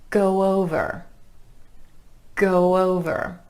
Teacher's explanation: We're gliding between those two vowel sounds with a soft w.